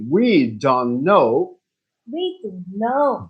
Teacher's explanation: When you speak fast, we don't say the T. We say we don't know.